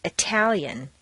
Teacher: The tal of Italian is at the top of the staircase and is strong